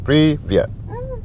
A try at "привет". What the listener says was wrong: Not necessarily, no. You would say just regularly, привет.